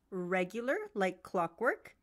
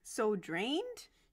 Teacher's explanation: Notice that the lowest point is the stressed syllable of the word the speaker is checking on, and the rest of the word group is rising. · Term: rising intonation